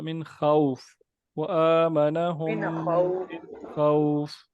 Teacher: یہ حروف لین کو لمبا نہیں کیا جاتا زیادہ